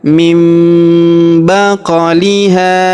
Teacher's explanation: huruf qaf berharokat sukun kita pantulkan atau kita qalqalahkan.